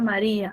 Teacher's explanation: hay una secuencia de vocales donde lo que se manifiesta es un hiato acentual